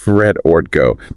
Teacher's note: when spoken quickly, the consonants disappear and the vowels just blend together. It usually sounds something like fret orgo.